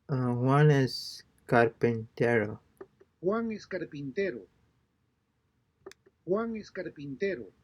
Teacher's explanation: be sure that the pitch of your voice falls at the end